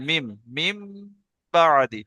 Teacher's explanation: যখন নুন সাকিনের পরে আপনি বা দেখতে পাবেন তখন পড়ার সময় আর মিন বলবেন না, তখন এবারে মিম বলবেন, মিম, মিম বাদি, ঠিক আছে?